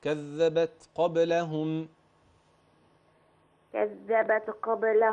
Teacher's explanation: جميل، بس التاء لا تقلقل